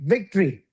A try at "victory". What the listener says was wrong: No O. No O. Just victory. So there's a difference between V and W, correct? One is V and one is W, right?